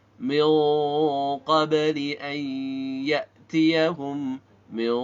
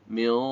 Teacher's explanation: Dengan mengangkat pangkal lidah agar suara ikhfa-nya menjadi terdengar lebih tebal atau tafkhim. Qabli, ba pantul karena punya sifat khusus qalqalah.